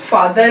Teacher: देखिए ये हमारा बैक पार्ट है टंग का, ये ओपन पोजीशन है, यहाँ पे ये वोवल है, और बोलते हुए लिप्स अनराउंडेड हैं, तो इसका नाम हुआ बैक ओपन अनराउंडेड वोवल